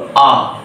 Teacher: তখন আমার জিভ না সামনের দিকে না পিছনের দিকে, একেবারে সমতলে মুখবিবরের মেঝেতে অবস্থান করছে। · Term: কেন্দ্রীয় স্বরধ্বনি